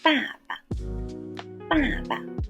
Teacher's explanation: The first character is a fourth tone, 爸, and the last one is a light tone